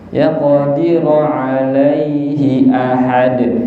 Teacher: Hak niki hak kasroh niku pendek nggih, ampun dibaca panjang.